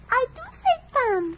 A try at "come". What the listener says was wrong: you say tum. Now say come as Papa does.